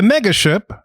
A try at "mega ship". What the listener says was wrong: That's mega ship, not maga ship. Make sure you pronounce that clearly.